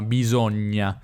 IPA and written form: bisoŋŋa (bisogna)